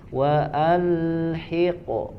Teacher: qafnya saja yang dipantulkan